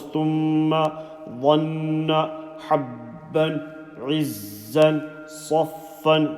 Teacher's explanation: When mim and noon has shaddas, you will make a strong sound from the nose.